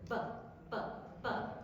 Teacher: So it's a bilabial plosive. Your two lips, bilabials, allow the air to build up behind them and then explode through.